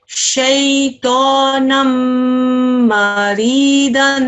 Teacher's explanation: Here is a mim mushaddad. Okay, we're going to press down on the mim for 2 seconds